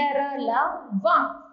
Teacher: जिन व्यंजनों का उच्चारण करते समय जीभ मुख के भीतर किसी भाग को पूरी तरह से स्पर्श नहीं करती उन्हें अंत्यस्थ व्यंजन कहते हैं।